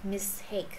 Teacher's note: Rồi, mistake. Nhấn chữ take vô. Mistake, chứ không có mistake nha.